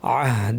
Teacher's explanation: থামার ক্ষেত্রে এই ওয়াটা পড়াই হবে না আহ বলে থেমে যাব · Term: সিলা